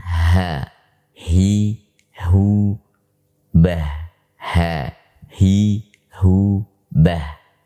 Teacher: dihasilkan dari bagian paling bawah tenggorokan, sebagaimana disebutkan oleh mayoritas ulama Al-Quran · Adapun mayoritas ulama mengatakan, termasuk Al-Imam Ibnul Jazari rahimahullahu taala, beliau berpendapat bahwanya ha itu keluar atau dikeluarkan melalui tenggorokan yang paling dalam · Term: huruf Ha